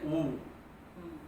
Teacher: ऊ की ओर जाते हैं तो होंठ केवल नजदीक लिए जाते हैं